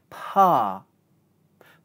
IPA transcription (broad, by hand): pɑː